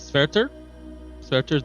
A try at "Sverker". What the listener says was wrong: With a K. Sverker.